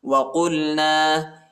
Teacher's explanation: یہ بڑا قاف ہے، اس کو وسع حلق میں پڑھنا ہے، ٹھیک ہے، گلے کے درمیانی حصے میں